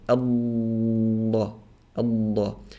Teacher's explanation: And so if you put your tongue, for example, the tip of your tongue like maybe above your canines, and not above your incisors, it's not in front of the front teeth, above your canines, and then it goes, the side of the tongue is touching the side of the mouth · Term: flowing sound